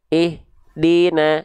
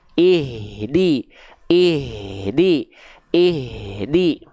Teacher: pastikan ya H besarnya itu dilafalkan nafasnya harus ngalir. Nama sifatnya hams.